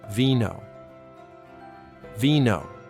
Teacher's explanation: The letter V sounds exactly like B in Spanish. They're the same.